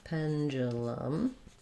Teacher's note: so we have first syllable stress we have that red tent vowel